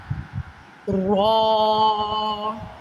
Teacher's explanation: را کو منہ گول کر کے موٹا کر کے پڑھیں گے